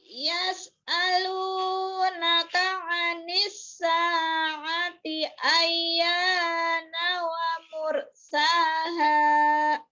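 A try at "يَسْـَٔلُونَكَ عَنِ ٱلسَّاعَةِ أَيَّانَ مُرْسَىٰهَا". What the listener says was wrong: Tidak ada wa, ayyana mursaha. Ulang lagi.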